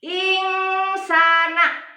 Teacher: Ada nun sukun bertemu dengan sin. Dibacanya mendengung. Bukan membacanya bukan insana, tapi insana. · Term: ihfa